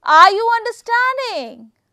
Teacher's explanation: for questioning somebody uses the high or Rising intonation are you understanding so that is I'm just raising Rising intonation